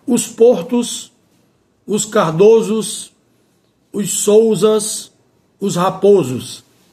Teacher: Aqui nesse caso, em relação a esses nomes próprios de família, nesses quatro casos mencionados, o não muda o timbre, ou seja, não sai do timbre fechado para o som aberto, permanece no mesmo timbre, o timbre fechado.